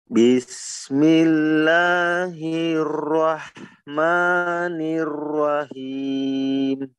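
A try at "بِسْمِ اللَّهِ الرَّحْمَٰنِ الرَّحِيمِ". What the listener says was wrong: Rohnya tebal kan? Nirrahim. Rahim. Langsung tutup. Nah, ketika roh akan terangkat pangkal lidah itu, terus kita seperti senyum ketika kehanya, biar bunyinya tipis.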